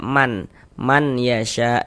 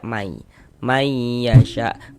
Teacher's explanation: bunyi nun sukunnya dimasukkan ke huruf ya, sehingga ini kita baca mai, jangan dibaca man yasha, jangan, tapi dibaca mai yasha, kemudian digunakan atau didengungkan sehingganya di bagian mai. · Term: idgham bi gunnah